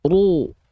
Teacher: maka lafalkan ro berharokat dhammah, jangan cuman ru, tapi angkat pangkal lidahnya.